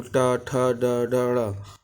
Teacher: टा वर्ग का उच्चारण मूर्धा से होता है